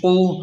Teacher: قاف پیش قو، قاف کو حلق سے موٹا پڑھیں